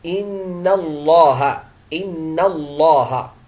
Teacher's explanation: اللام مغلظه هنا لان النون التي في الكلمه التي قبلها مفتوحه